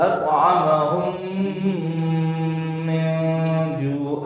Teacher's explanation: agak dipanjang tuh. Disertai dengan gunnah.